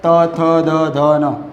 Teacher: ત વર્ગના વ્યંજન તમે બોલો છો ત્યારે જીભનું ટેરું તમારા ઉપરના દાંતને સ્પર્શ છે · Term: દંત્ય